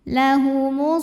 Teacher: karena ada baris fathah tegak di atas huruf lam maka cara bacanya dipanjang lamnya dua harakat